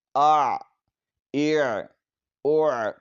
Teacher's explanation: عین حلق کے درمیان والے حصے سے ادا ہوتا ہے۔